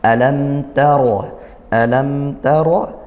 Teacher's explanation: Mim sukunnya dibaca jelas, jangan sampai dientak, tidak perlu dengung juga. Taro, ra-nya tafkhim dibaca tebal. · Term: izhar syafawi